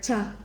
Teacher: it is like a quick t sound plus the sh sound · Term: cha sound